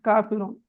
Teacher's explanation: சொன்ன மாதிரி காஃபிரூன் காஃபிரூன்ல ரா லம்மக்காக வந்திருக்குது லம்மத் பெற்று வந்திருக்குது எனவே அந்த ராவை நாங்க எப்படி ஓதணும் வல்லினமாக ஓத வேண்டும்